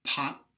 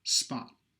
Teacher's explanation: the aspirated one has a much longer vot than the unaspirated one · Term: aspiration